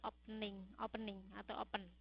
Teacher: penekanannya diberikan pada awal suku kata